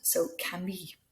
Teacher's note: So Camille, it's got an E, and that E makes us pronounce the double L sound, which is actually a Y sound